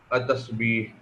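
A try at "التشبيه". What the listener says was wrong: تشبیہ نہیں تین تا اور شین ہے نا، تشبیہ۔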